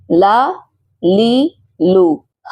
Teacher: تو زبان کا کنارہ دائیں طرف ثنایا سے زواحق تک لگے یا زبان کا کنارہ بائیں طرف ثنایا سے زواحق تک لگے، دونوں صورتوں میں لام کی ادائیگی درست ہے۔